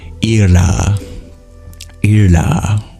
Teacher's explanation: it's a very difficult name to pronounce because it's a retroflex lateral approximant